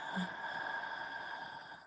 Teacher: Slight constriction at the back of the throat. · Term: ocean sound